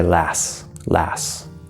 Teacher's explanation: whenever we have an st at the end of a word what will usually happen it's not required but what will usually happen is the T will disappear it will just disappear so instead of last you say last